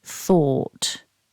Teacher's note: it's written but we do need to keep it one syllable the word begins with the unvoiced sound so you need to pop your tongue out for that then we have the long or vowel or followed by an